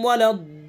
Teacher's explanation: मद्द लाजिम होगा, यानी कम से कम 3 अलिफ खींचेंगे, ज़्यादा से ज़्यादा 5 अलिफ, कम से कम 3 अलिफ।